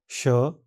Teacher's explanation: दांत हल्के से बंद रहते हैं। जीभ उससे थोड़ा दूर रहती है और हवा संघर्षण के साथ बाहर निकलती है।